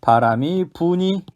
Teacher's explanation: 어간에 있는 리을, 살다, 불다, 리을이 발음에서 없어졌습니다. 음운 변동, 리을 탈락이 일어났습니다.